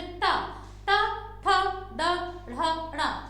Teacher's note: जीभ हमारे मुख के ऊपर के भाग को टच करती है, हम उसे मूर्धन्य कहते हैं